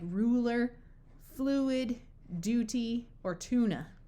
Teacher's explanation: if it's after a letter L or a letter r and the Y part gets lost and you wind up with just the oo sound